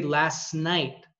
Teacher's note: both the t and the n are both alveolar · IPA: læsnayt